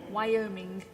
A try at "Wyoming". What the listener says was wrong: Except you always get that gug thing on the end.